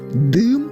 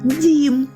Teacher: перший звук вимовляється по-різному у слові дим він твердий одна рисочка у слові дім м'який